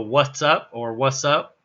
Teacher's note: in fact the T might not even be there when we do what's up